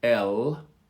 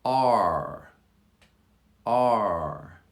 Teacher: the r sound r the tongue curls in the back and so it it sort of closes the air column in the back of the throat